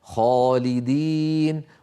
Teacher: الخاء مفخمة وبالتالي كانت الألف التي بعدها مفخمة